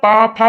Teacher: कौन होता है, तो वो होता है ओष्ठ। जब आप पा फा बोलेंगे ना, तो जो आपकी जो लिप है यानी होठ है वो एक दूसरे से टकराती है